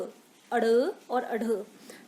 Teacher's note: तो अड़ जो है, जब हम लोग अड़ बोल रहे हैं तो हमारी जीभ जो है वो एक तरीके से फोल्ड हो रही है और उसके साथ ही हम उच्चार कर रहे हैं इस वर्ण का। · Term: उत्क्षिप्त व्यंजन